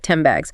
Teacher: The N sound made with the tongue near the front changes to an M sound made with the lips because the next sound B is also made of the lips.